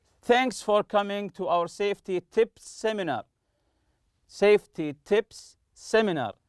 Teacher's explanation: The sound sa, you have to link it together as if it's one sound. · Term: linking the consonant